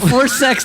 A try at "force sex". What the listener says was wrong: Well, you don't add a D at the end. Force sex. If you say forced, That's bad.